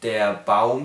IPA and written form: deɐ baʊm (der Baum)